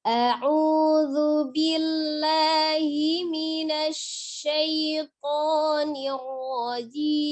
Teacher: Minasya, tampakkan tafasi di huruf shin ya.